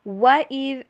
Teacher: واؤ کو انگلش میں ڈبلیو والی ساؤنڈ کے اوپر پڑھیے، وی والی ساؤنڈ کے اوپر نہیں پڑھنا ، اور ہونٹوں کو مکمل جوڑنا نہیں ہے، گول کر کے